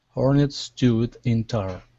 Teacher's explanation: good connection of hornets and stewed, with the S's